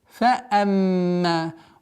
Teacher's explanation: Удержание в размере 2 огласовок мимо. Назализация. После назализации уходим в удлинение.